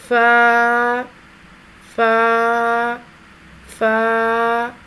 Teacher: 2 حرفی آواز تھوڑا سا کھینچ کر ادا ہوگی۔ فا، سامنے والے اوپر کے 2 دانتوں کے سروں کو نچلے ہونٹ کے گیلے حصے پر لگا کر باریک آواز میں ادا کریں گے۔